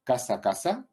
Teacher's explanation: variedades seseantes, donde solo existe uno que es pronunciado como S, lo que vamos a llamar apico alveolar